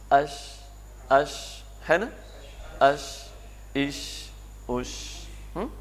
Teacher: جیسے اش ایسے نہیں کہتے، اش ایک دم بریک نہیں لگاتے جھٹکے کے ساتھ، بلکہ آواز تھوڑی سی آگے پھسلتی ہے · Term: شین